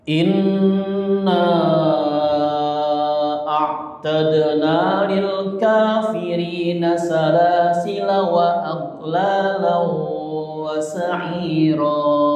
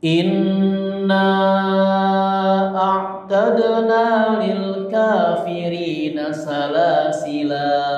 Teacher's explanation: Lafaz salasila dibaca pendek ya ketika wasol dan dibaca panjang ketika waqaf.